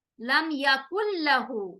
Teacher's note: نون کو لام کے اندر چھپا رہے ہیں، مرج کر رہے ہیں